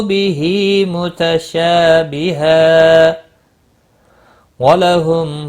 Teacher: تنوین کے بعد حروف یرملون کا واو آئے، ادغام باغنہ ہوگا